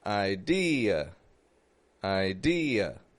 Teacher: it's soft it's not stressed but it is getting a tense ey sound